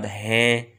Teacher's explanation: میں کے اندر بھی نون غنہ پڑھا جاتا ہے، نون مکمل نہیں پڑھا جاتا ہے